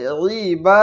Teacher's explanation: জবরের বাম পাশে খালি আলিফ, এটা মদের হরফ, এই কারণে এখানে টানতে হচ্ছে এক আলিফ পরিমাণ। তাহলে ওই বা।